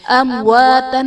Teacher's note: امواتن میں میم ساکن کے بعد حرف با اور میم کے علاوہ واو ہے، یہاں بھی اظہار شفوی کا قاعدہ ہوگا، یعنی میم ساکن میں ہم غنہ نہیں کریں گے۔